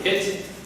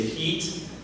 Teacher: So part of it is also, the closed versions tend to be lengthened in language, and the open versions tend to be short. So like, if you say the word hit, it's short, it's quick, it's open, hit. And you say heat, it's a little bit lengthened, it's a little bit stretched.